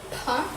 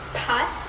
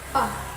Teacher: the lips come together to stop the airflow. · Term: stops